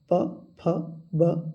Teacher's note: प वर्ग को बोलते समय ओठ का प्रयोग होता है। बिना हंठ एक दूसरे से टॉर्च हुए प वर्ग को आप बोल नहीं सकते।